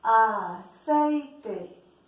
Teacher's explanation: Se unen dos vocales en la sílaba sei, la E y la I. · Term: diptongo